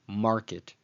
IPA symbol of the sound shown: m